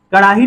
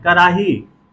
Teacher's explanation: पूर्वी हिंदी वाले जब इसका उच्चारण करते हैं तो कैसे करते हैं, इसमें ड में रे का उच्चारण करते हैं